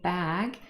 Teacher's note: We really do this because the next sound in the following word, really, bag, is a B. And B is also formed with both lips closed.